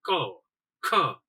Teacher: આ બધાય વર્ણ બોલો ત્યારે હવા છે શું હોય, પેલા રોકાયેલી હોય છે, પછી ને કે ક, ખ એમ હવા છે અચાનક બહાર નીકળી જાય, એટલે એનું શું થાય, વિસ્ફોટ સાથે બહાર નીકળે છે, એટલે આને શું કહીએ છીએ આપણે, સ્ફોટક કહીએ છીએ.